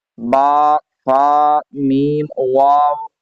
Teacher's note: یہ جو 4 لیٹرز ہیں با، فا، میم، واو، ان میں ہونٹ ہلتے ہیں۔ ان 4 لیٹرز کے علاوہ کسی بھی لیٹر میں آپ نے ہونٹوں کو ہلانا نہیں ہے، ٹھیک ہے؟